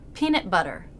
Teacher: stopped T, released B